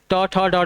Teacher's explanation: ट, ठ, ड, ढ आपके क्या है मूर्धन्य है